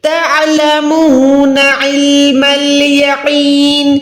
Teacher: اس کے بعد تعلمون، عین کو جو ہے حلق کے اوپر والے حصے سے یا نیچے والے حصے سے ادا نہیں کر سکتے، پروپر ہم نے عین کو حلق کے بیچ سے یعنی ہڈی سے ادا کرنا ہے